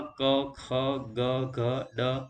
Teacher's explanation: જે વ્યંજનોનું ઉચ્ચારણ કરતી વખતે જીભની પાછળનો ભાગ તાળવાને સ્પર્શે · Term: કંઠ્ય